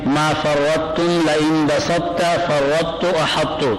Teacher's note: اس میں ادغام ناقص ہے، اور طوا میں جو قلقلہ تھا وہ قلقلہ ختم ہو گیا، ادغام کی وجہ سے قلقلہ ختم ہو گیا، یہ قلقلہ نہیں ہوگا.